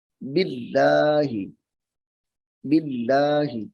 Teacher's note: من آمنا، با کو لام کے ساتھ ملائیں گے، باللہ، باللہ، یہاں پہ اس میں جلالت اللہ کا لام ہے تو اس کو باریک پڑھیں گے، کیوں کہ اس سے پہلے حرف کے نیچے زیر آ رہی ہے